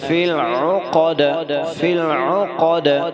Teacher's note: دال پہ قلقلہ کرنا ہے کیونکہ دال جو ہے یہ حرف قلقلہ میں سے ہے